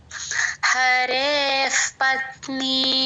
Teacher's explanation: పా ముందు విసర్గ అండి ఎఫ్ లాగా చెప్పాలి